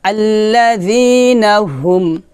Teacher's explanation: এখানে হাটা নরমাল হবে হলকের শুরু থেকে বলতে হবে